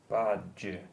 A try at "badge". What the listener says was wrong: it's not badger. That's difficult for you. So again, it's the D, and if you look, it's the D, J, which is J. So this D at the end is difficult for you because